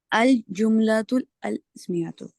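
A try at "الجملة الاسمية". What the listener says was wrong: नहीं ऐसे नहीं, अल जुमलतुल इस्मियतु। देखिए अल नहीं करें, आपने जब जुमलतुल मिला लिया ना, क्या हो रहा है, एक मिनट। अच्छा, अल जुमलतुल इस्मियतु, अब पढ़ें।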